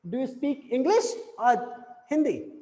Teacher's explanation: there is a rising and then a falling tone